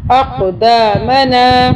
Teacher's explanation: اقدامنا قلقلہ کریں گے ذرا، ہم اس کو طاقت سے پڑھیں گے